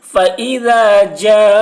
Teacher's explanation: حرف مد کے بعد حمزہ اسی کلمہ میں ہے، اس لیے مد متصل ہوا، مد متصل کو 3 یا 4 الف کے برابر کھینچ کر پڑھیں گے